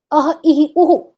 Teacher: यदि अ के बाद विसर्ग कहा गया तो उसका उच्चारण कंठ से होगा यदि ई के बाद कहा गया तो उसका तालू से होगा यदि उ के बाद कहा गया तो उसका ओष से होगा